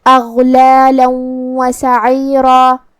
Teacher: واو حروف الادغام بغنہ میں سے ہے اور ادغام کا معنی ہے حرف کو حرف میں داخل کرنا، تو ہم یہ تنوین کو واو میں ملا کے غنہ اور تشدید کے ساتھ یہ حکم کو ادا کریں گے · کلمت سعیرہ میں یہاں حرف العین کا دھیان رہے جو کہ را پہ تنوین زبر ہے تو را کا حکم ہے تفخیم. ہمیں را کو بھاری آواز میں پڑھنا ہے